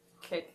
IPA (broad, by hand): λeλ